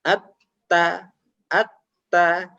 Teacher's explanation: Huruf ta ini memiliki makhraj atau tempat keluarnya huruf adalah ujung lidah mengenai pangkal dua gigi seri yang atas